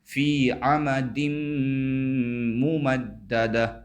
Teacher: جو دال کے نیچے 2 زیر کی تنوین ہے، اس تنوین کے بعد میم آ رہا ہے، لہٰذا تنوین کو میم سے ملا کر غنہ کے ساتھ پڑھیں گے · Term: ادغام مع الغنہ